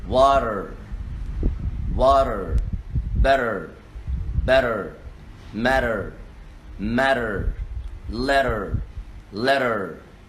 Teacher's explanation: letter t in a word between two vowel letters will be d